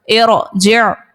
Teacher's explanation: رو ساکن سے پہلے عارضی حرکت ہے، عارضی زیر ہے، رو کو یہاں پر پر ادا کریں گے